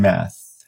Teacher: It's voiceless, and then interdental and fricative.